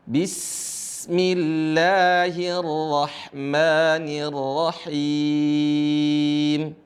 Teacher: Seringkali teman-teman membacanya bismillahi, dan ini tidak benar. Yang benar adalah sinnya dialirin suaranya.